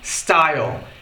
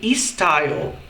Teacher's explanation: O brasileiro, quando ele começa a falar algumas palavras em inglês, em especial palavras começadas com S, tem o costume, ele tem a mania de colocar I logo no começo da palavra. Por exemplo, a palavra estilo em inglês, a gente deve falar style.